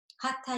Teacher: the TH makes a th sound where you bring the tip of your tongue just behind the teeth